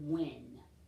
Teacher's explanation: So when we have a blend of WH, I want you to think about what sound that makes. It makes a W sound. We don't hear the H. The H is silent.